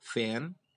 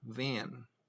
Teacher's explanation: lower lip is in contact with the upper teeth the fricative voice is not very strong and barely audible so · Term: labia dental fricative